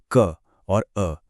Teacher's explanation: अगर आप ध्यान से क बोलेंगे ना, तो आपको उसके लास्ट में अ की आवाज छुप कर बैठी हुई सुनाई देगी।